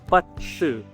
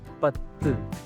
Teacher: That is Pa with a gemination of Ta with a Tulu special vowel U. It's not U, okay?